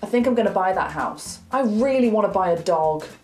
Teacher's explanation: instead of saying going to, we say gonna, and instead of saying want to, we say wanna